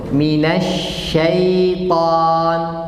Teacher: Kita bilang tadi, kalau huruf tipis pangkal lidah enggak usah naik. Sekarang ya dan shin tipis, pangkal lidah turun.